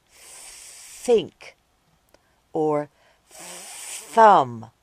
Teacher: do it quietly like at the beginning of think or thumb this sound is called the unvoiced th sound